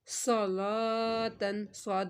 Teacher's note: صاد حرف مستعلیہ میں سے صاد کو تو موٹا پڑھیں گے، لام کو ہم نے پتلا ہی پڑھنا ہے کیونکہ یہ اللہ کا لام نہیں ہے، اس کے اوپر کھڑا مد ہے، ایک الف کے برابر کھینچا، صلاتن۔